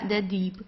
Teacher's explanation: Also the B, it's not pronounced very strong, so it's not Dieb or so, it's deep. Sounds more like a P at the end.